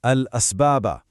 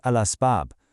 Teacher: But what if the reciter chooses to to there, you know, for emphasis, for breath, for artistry. Well, the moment they decide to stop, the rule of pausing in Arabic makes that final letter temporarily silent. · If you're reading straight through to the next word, that final letter ba has a vowel sound on it. Al-asbaba. No echo, no qalqalah. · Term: divine echo